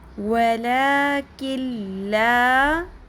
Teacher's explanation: یہاں پر نون ساکن کی آواز نہیں آئے گی. ہم یہاں پر ادغام کریں گے لیکن غنہ کے بغیر